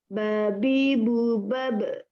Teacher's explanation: Okey, bila kita sebut huruf ba pula, bila kita ada bersukun, dia tak sama macam huruf Hamzah. Huruf Hamzah tak ada qalqalah, huruf ba ada qalqalah. Bila dekat hujung dia jadi qalqalah kubra, besar.